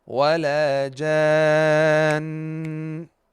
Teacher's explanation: Here in Surat Ar-Rahman in this verse, we see the last word of the verse, it has noon mushaddad. And we have to apply ghunnah for it even if it's the last letter in the verse that we're stopping reading on it